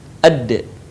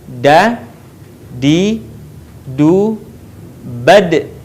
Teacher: Huruf da keluar dengan cara menyentuhkan ujung lidah kita ke gusi bagian atas sebagaimana kita melafalkan huruf ta. Dalam keadaan mati, huruf da terdengar suaranya memantul.